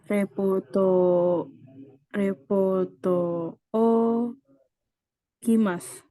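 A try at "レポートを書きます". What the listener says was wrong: Kurang sa ya depannya. Sa, mas.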